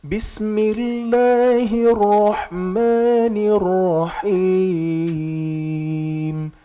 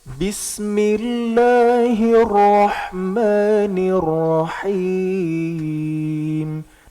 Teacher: Bis tipis ya. Bis agak ditarik dikit.